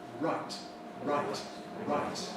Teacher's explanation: Do you notice that I round my lips for right, right, right? Some people even make the R sound entirely with the lips and say right, right, right.